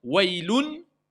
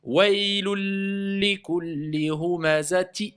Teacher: Dès qu'on a dit ou, on passe à l'autre lettre avec shidda. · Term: l'assimilation